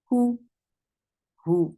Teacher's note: Who for dhamma, circle your lips, and the sound is very short.